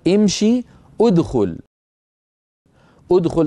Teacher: ادخل نضم الهمزه لان الحرف الثالث مضموم · أدخل نضم الهمزة لأن الحرف الثالث مضموم، وامشي نكسر الهمزة لأن الحرف الثالث مكسور. إذن حركة همزة الوصل في الأفعال دائرة بين الضم والكسر ولا تكون مفتوحة أبدا. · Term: همزه الوصل